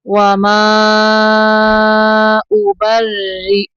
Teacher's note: با کو را کے اندر ملائیں گے اور را کو باریک پڑھیں گے